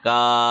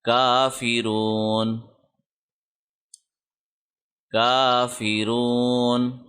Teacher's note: کاف کے اوپر کھڑی زبر ہے، اس کو 1 سیکنڈ لمبا کرنا ہے، کا ایسے، تو یہ ہوگا کافرون کافرون۔